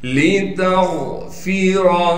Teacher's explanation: لِتَغْفِرَ، لام کو بغیر کھینچے پڑھیں گے، تا کو غین سے ملا دیں گے اس لیے کہ غین ساکن ہے اور غین کو موٹا کر کے پڑھیں گے